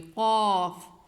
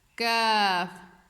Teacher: جو دو نقطوں والا قاف ہے اس کو ہم موٹا کر کے پڑھیں گے اور جو دوسرا کاف ہے اس کو ہم باریک پڑھیں گے